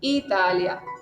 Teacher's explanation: Italia igual acentúo la I.